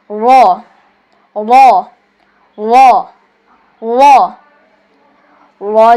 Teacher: র মোটা করে উচ্চারণ হবে